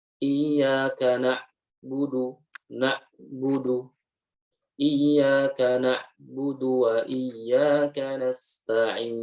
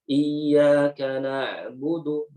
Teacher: tawassut itu mengalir ya suaranya walaupun cuma sedikit